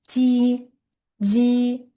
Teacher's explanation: J tovushini jarangli talaffuz qilishim kerak bo'ladi.